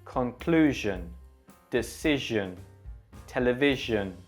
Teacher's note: This symbol does look a bit like the number 3, and it's said similar to the previous symbol we looked at, SH, shh. But while you're making that sound, the SH sound, try to vibrate your voice.